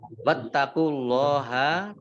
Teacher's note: Wattaqullaha, taknya dibaca double, ada tasdidnya. Allahnya dibaca tebal karena harokat di depannya dhammah